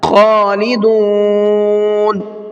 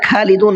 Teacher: خا کو تھوڑا سا حلق سے نکالنا ہے, خالدون نہیں پڑھنا ہے.